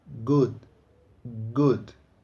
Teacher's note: Esse som de G provoca uma vibração na nossa corda vocal. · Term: voiced sound